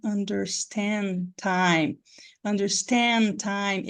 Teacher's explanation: esse D vai sumir gente porque vocês lembram que o d e o t são homo orgânicos